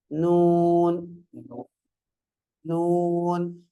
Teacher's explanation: நுனினாவிலிருந்தும் மேல்நடு பற்களின் வேரிலிருந்தும் உச்சரிக்கப்படுது